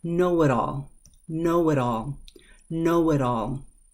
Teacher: because it is between two vowels that T is pulled over to the other word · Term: flap T